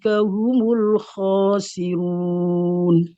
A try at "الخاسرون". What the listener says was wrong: Roknya tipis. Itu cuma merubah mulutnya aja. Jadi kalau perbedaan yang khosirun itu ya hanya merubah posisi lidahnya aja. Jadi sebelum ngucapin ro, rubah menjadi cara pengucapan huruf ro tipis. Nah, sudah jadi tipis itu. Jadi perubahannya di situ.